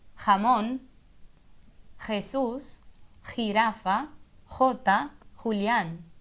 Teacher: A letra J é bem parecida com a letra G, mas com um G que vem da garganta. Então, independente da vogal, a letra J, J, vai vir lá da garganta